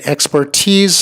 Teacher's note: the emphasis on the last syllable, tease, not expertise.